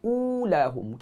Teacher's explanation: Ula jaga makhraj huruf hamzah. Ingat dua sifat jahar dan juga syiddah pada huruf hamzah.